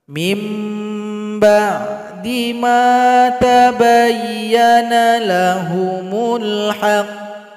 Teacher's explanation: tiga yang pertama kemudian ayat 109 di sini ada huruf Qalqalah huruf qaf dan dia bertasydid cara berhentinya sukun kan hurufnya kemudian tekan bacaan kita tunggu dua detik baru dipantulkan · sukunkan huruf qafnya, kemudian tekan bacaan kita, tunggu 2 detik baru dipantulkan